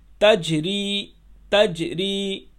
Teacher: جیم کے اوپر جزم ہے، یعنی جیم ساکن ہے، اس لیے اس کو جھٹکا دیں گے۔ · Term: قلقلہ